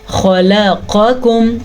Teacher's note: خا کو پر پڑھیں گے، خا ہمیشہ پر پڑھا جاتا ہے، خا حروف مستعلیہ میں سے ہے